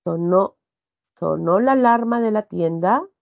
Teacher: Es una oración cuya inflexión de la voz es ascendente.